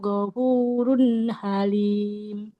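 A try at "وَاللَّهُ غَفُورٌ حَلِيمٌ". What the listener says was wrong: Nah, di lafaz Allah, haknya nggak boleh panjang ya. Nah, dhammahnya tidak bertemu dengan waw. Wallahu ghafurun halim.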